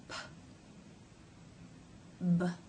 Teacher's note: the stop of the air flow happens as the lips remain closed and the release when they part and the air comes through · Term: stop consonants